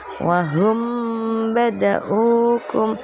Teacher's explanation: Dan huruf yang ada di dalam lingkaran yang bertanda merah ada mim sukun bertemu dengan ba, itu dinamakan ikhfa syafawi. Cara membacanya dibaca samar di bibir dan didengungkan.